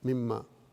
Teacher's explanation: تو وہ اصل میں جو ہے من ماں ہے، اور اس نون کو جو ہے پھر میم میں بدل دیا جاتا ہے، من ماں کے بجائے مما